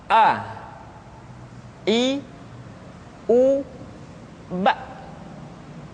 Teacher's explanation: Makhraj ketika mengucapkan huruf A berada pada tenggorokan yang terjauh.